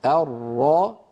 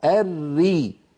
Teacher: عمل رأس اللسان واحد في الراء المفخمة والراء المرققة. الراء الري، الراء الري، ولكن الفرق في توضع اللسان في جزئه الخلفي.